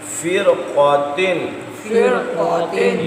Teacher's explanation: را ساکن ہو اور اس کے آگے مستعلیہ حروف میں سے کوئی حرف آ جائے تو وہاں پر را کو پر ہی پڑھا جاتا ہے، اگرچہ اس سے پہلے زیر اصلی ہی کیوں نہ آ جائے۔